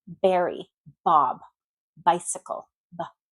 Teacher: When we do a B in English, our lips go together and they pop open.